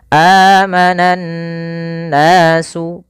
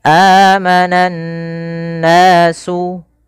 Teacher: Cara membacanya adalah kita menahan suara nunnya. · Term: gunnah